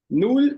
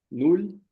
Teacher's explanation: esse l com a língua no céu da boca